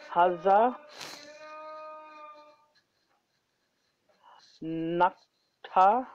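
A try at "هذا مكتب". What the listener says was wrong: Haza maktabun. Use tanween. Haza maktabun.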